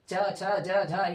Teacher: तो तालु और जीभ के जब मिलन होता है, छूने जैसे छूता है तो वैसे ही इतने सारे वर्ण का आवाज निकल जाता है।